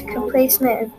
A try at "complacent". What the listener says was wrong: Complacent. Where do you get meant?